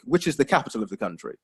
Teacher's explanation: So there you've got your falling intonation, particularly for that second clause, which is the capital of the country.